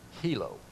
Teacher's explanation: the I is not pronounced as an I in Hawaiian. It's pronounced as a long E or a double E. So this word would be hilo.